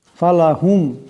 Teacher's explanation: এই মিম সাকিন কে গুন্না করা যাবে না